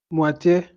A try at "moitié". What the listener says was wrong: Moitié. Very good.